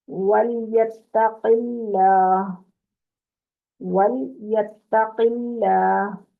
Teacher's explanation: अब क़ाफ को पुर करना है, लाम को पुर नहीं करना।